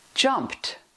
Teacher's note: Ends in t because p is voiceless.